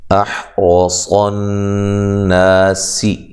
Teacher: ہا کو واضح نکالنا ہے، حمزہ کو تحقیق سے پڑھنا ہے